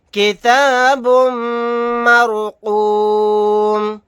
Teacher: میم مشدد ہے، یہاں پر غنہ کریں گے، رائے ساکنہ سے پہلے زبر ہے، رائے ساکنہ کو موٹا یعنی پر پڑھیں گے، میم کو ساکن کر دیں گے آیت کرنے کی صورت میں۔